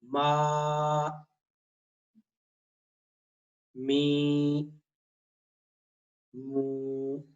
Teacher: میم کا مخرج تو دونوں ہونٹوں آپس کے اندر ملنا ہے